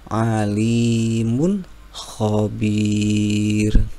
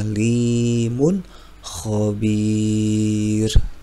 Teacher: tanwin bertemu dengan Kho maka wajib dibaca Idhar dengan jelas